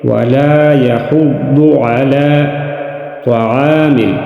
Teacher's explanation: ولا يحض، ضاد کو موٹا ادا کریں گے، مستعلی حروف میں سے ہے۔ علی کڑی زبر کو ایک الف کے برابر کھینچ کر پڑھیں گے